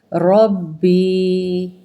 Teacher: رب پہلے تشدید والا حرف ہے، 2 مرتبہ پڑھیں گے اور را کو پر پڑھیں گے